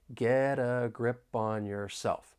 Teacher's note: because I'm from the US I am going to pronounce it as a flap T that I can then link with the vowel sound in the article